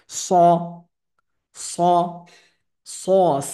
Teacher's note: জিহ্বার মধ্যভাগটা এই উপর দিকে তালুর দিকে একটু ধাবিত হয়, আর তখনই হরফটা মোটা হয়, সাউন্ডটা মোটা হয়। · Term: মোটা হরফ